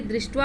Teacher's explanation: तालव्य स का मूर्धन्य स हो जाता है, क्योंकि मूर्धन्य तालव्य स, अगर तालव्य स यहाँ पे है लास्ट में और उसके बाद त लगाना है, जैसे यहाँ पे क को तो लोप कर देना है और त लगाना है, तो मूर्धन्य स में परिवर्तन हो जाता है।